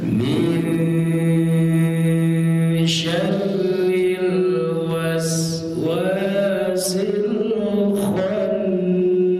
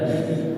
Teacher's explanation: Min, ditahan. Mi-nya ketukan pertama, N-nya 2 dengungnya. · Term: ikhfa